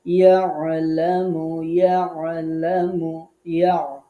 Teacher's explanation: আইনটা সুন্দর করে কণ্ঠের মাঝখানে উচ্চারণ করবেন